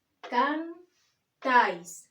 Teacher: La fuerza de voz recae sobre la segunda sílaba, la última sílaba de la palabra. Tiene tilde ortográfica, tiene acento, tiene tilde, porque es una palabra aguda y termina en la consonante S.